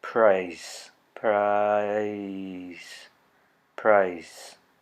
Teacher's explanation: the vowel in price, starting at an A and moving towards an I position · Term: diphthong